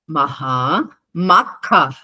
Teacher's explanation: ఖ లాస్ట్ కి మహాప్రాణం వచ్చింది